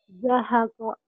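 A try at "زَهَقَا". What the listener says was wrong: Mana? Kan ini mau panjang, Neng. Zahaqo.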